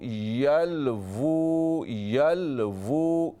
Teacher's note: ये देखिए, यल वो लफ़रीक़न यल, या लाम ज़बर यल, वाव उल्टा पेश वो, ऊ नहीं है। अगर हम कहें यल ऊ ना तो ये हमज़ा की आवाज़ है, ये वाव नहीं है। हमें पढ़ना है वाव उल्टा पेश वो, यल वो, यल वो।